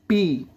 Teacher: ba di sini adalah bibir atas dan bibir bawah ketemu